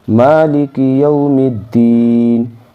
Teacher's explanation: اس میم کو دال مشدد میں ملائیں گے کیونکہ دال کے اوپر تشدید ہے